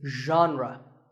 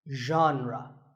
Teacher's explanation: pay attention to the first sound it's like sh but you have to put your voice into it